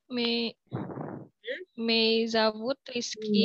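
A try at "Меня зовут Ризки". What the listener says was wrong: Minya. Jangan dipotong. Minya. Minya zovут Rizky.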